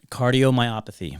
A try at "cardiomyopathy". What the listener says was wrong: Myopathy. You said You're putting an N in there.